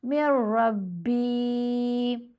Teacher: کر کے لمبا نہیں کرنا، بلکہ صرف من نہیں پڑھیں گے، میم کو را سے ملا لیں گے، نون کی آواز ختم ہو جائے گی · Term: ادغام